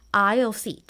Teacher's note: We pronounce it as aisle without the S.